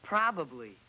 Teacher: You changed the second B to an L.